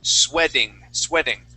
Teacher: The word is sweating, and that t is going to change to a d sound